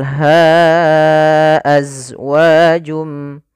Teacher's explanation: pada dasarnya ha itu dua harakat karena datang setelahnya huruf hamzah maka menjadi panjangnya 4 harakat atau 5 harakat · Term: Mad Jaiz munfasil